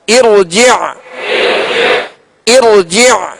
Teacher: عین کو واضح ادا کریں گے، عین کو ساکن کر کے اس کی آواز واضح کریں گے.